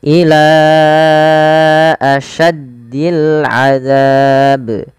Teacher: awalnya ila dua harakat, tapi karena bertemu dengan hamzah kita jadi panjangkan dia empat harakat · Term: mad jaiz munfasil